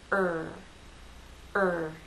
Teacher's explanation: the back part of your tongue is raised it's pulled into a ball and raised towards the roof of your mouth back here so I'm going to feel vibration here I'm going